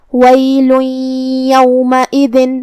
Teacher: تو ہم یہ تنوین کو یا میں ملا کے غنہ اور تشدید کے ساتھ یہ حکم کو ادا کریں گے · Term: ادغام